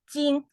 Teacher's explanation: Jin is the even tone so kind of like flat